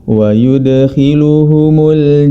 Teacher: Huruf dal yang berharakat sukun, ya, maka dia harus dipantulkan ketika membacanya, karena huruf dal termasuk dalam sifat qalqalah, yang mana Imam Ibnul Jazari rahimahullahu ta'ala telah merangkum dalam syairnya.